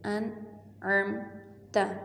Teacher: اسی طرح میم کے اوپر جزم ہے. عین کے فتحہ زبر کو میم کے ساتھ ملائیں گے اور میم کو بغیر ہلائے پڑھیں گے